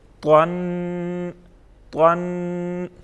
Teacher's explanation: تا دو زبر، اس سے کیا بنے گا تن تن. اب جو طا پڑھیں گے اس کو ہم موٹا پڑھیں گے، پر پڑھیں گے